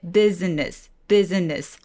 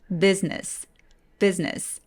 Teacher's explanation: 근데 business, business 하면 뭔가 어색하죠. 자, 중간에 I 소리를 없애버리고 이음절로 소리 내볼게요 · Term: vowel syncope